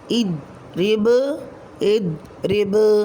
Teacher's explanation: حالت وقف میں حروف قلقلہ میں سے با ساکن حالت میں کلمے کے آخر میں آ رہا ہے، تو یہاں قلقلہ کبریٰ ہوگا